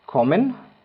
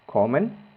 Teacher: la o es muy corta porque tenemos una doble consonante después de esa vocal